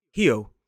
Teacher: a Brazilian would pronounce that first R in the word Rio as H